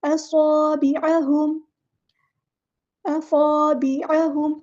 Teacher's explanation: यजअलूना असाबिअहुम, स्वाद में सीटी वाज़ेह करनी है, अलिफ मद्दा आ गया है और बा को बारीक अदा करना है, ऐन को मुस्तहलक से अदा करना है।